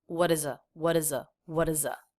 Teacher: flap T here connecting the uh as in butter sound with the E vowel